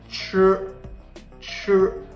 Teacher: tongue is curled up and back as you say CH